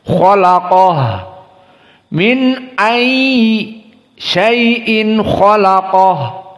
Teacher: Maka lam dijepit di antara dua tafkhim. Dan ha dalam keadaan hams, maka kholaqoh, dikeluarkan haknya, nafas.